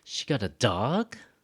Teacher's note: the focus word of the sentence the word that gets the most emphasis is dog